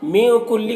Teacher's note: میں کلی کے نون میں اخفا ہو رہا ہے، نون کی آواز کو ناک میں چھپا کر پڑھیں گے